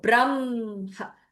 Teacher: when you do braha, then it is a chesty h